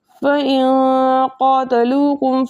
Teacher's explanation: ہم ناک میں گنگنی سی آواز کو چھپا کے اس طرح پڑھیں گے کہ ناکامل ادغام ہو اور ناکامل اظہار ہو، بلکہ دونوں کی درمیانی حالت ہو۔ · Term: اخفا